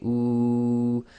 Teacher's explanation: if you say ooh you make a round circle with your lips and the back of your tongue will raise and again the air is Flowing nicely through through the oral